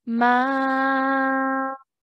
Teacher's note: the sound of ma is going to stretch for four counts